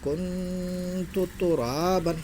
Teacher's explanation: اخفاء حقیقی ہوں گا نون ساکن کے بعد حروف اخفاء کے 15 حرفوں میں سے تا ہے۔ نون ساکن کی آواز کو ناک میں چھپا کر غنہ کے ساتھ پڑھیں گے